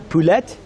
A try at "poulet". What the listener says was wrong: See, you're not supposed to pronounce the T's.